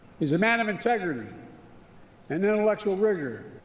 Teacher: not how you make an R sound in the English language his R suddenly transformed into a w